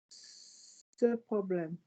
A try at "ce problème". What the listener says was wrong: Join the words for me. Keep it smooth. Ce problème.